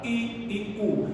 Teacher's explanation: Y las cerradas, la I y la U. Fíjate el movimiento de la boca, I y U. Significa que la boca cierra un poco.